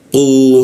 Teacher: huruf qu di siku tenggorokan lidahnya kita naikkan ya. Qu, seperti itu, tidak ada hembusan udaranya.